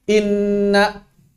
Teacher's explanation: Gunnah akmal itu ditahan 2 ketukan atau 3 ketukan.